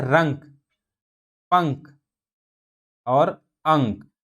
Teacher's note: अनुस्वार इसका उच्चारण करते समय वायु केवल नाक से निकलती है